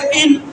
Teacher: اب یہاں پر نون کی آواز زیادہ نہیں آئے گی، اور غنہ بھی پورا ناک میں نہیں کریں گے، غنہ بھی آدھا منہ میں آدھا ناک میں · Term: اخفاء